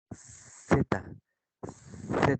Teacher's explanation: la lengua se coloca entre los dientes incisivos superiores e inferiores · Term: interdental